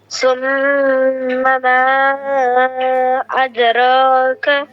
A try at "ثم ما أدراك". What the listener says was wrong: أدراك رو मोटा أدراك